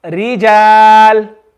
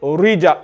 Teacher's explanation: when ra has a kasra, then it will be read as empty mouth. It's going to be read with a smile.